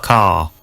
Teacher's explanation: And in car. schwa the vowel sound is lengthened in place of the r